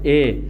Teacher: इस ए के उच्चारण में आप देखते हैं कंठ का भी योग है और तालु का भी योग है। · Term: कंठ तालव्य ध्वनि